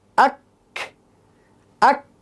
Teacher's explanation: জিহ্বার গোড়া থেকে একটু আগে বাড়িয়ে তার বরাবর উপরে তালুর সাথে লাগিয়ে উচ্চারিত হয় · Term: কাফ